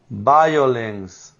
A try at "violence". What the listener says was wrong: Not not violence, but violence. Violence. You need to put more vibration on the V.